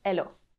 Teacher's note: we also can say hello but we don't pronounce the h